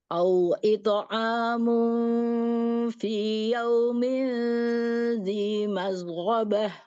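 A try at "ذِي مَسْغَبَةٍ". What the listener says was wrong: Masghabah. Mas biasa, bukan mash. Bukan mash. Mas sin biasa. Masghabah.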